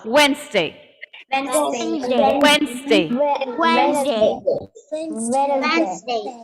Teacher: The d was not there because it's coming between a v and a n sound.